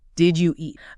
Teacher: The hard D and the Y biologically blend together in the mouth. It becomes one fluid, forward sound, you eat.